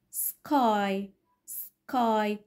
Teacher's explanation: unaspirated وبتيجي بعد consonant sky sky، حجزت الهوا شوية. هنا back unreleased، هنا الهوا ما خرجش تاني مع الك sound back back.